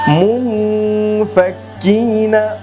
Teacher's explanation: এখানে দেখুন তানবিনের পরে, সরি তানবিন না, নুন সাকিনের পর ফা, ইখফার হরফ ফা এসেছে, এই যে ইখফার হরফ ফা, এই ফা আসার কারণে এখানেও গুন্নাহ নাকের ভিতর লুকিয়ে তারপর করতে হবে, অর্থাৎ ইখফার গুন্নাহ করতে হবে।